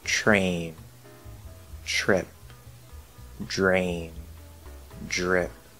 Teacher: But many speakers will either also or instead use chur and jur. They'll change the T into a CH and a D into a J, like the J sound. · actually replacing the T and D with CH and J. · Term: train changing